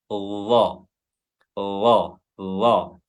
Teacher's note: makhraj huruf dha adalah ujung lidah bertemu dengan ujung gigi seri atas dan bawah